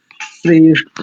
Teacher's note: का करते महाप्राण वाले अक्ष जैसे देखो मैं बोलू श्रेष्ठ तो ठ बोलते ठसक सी आती है कंठ से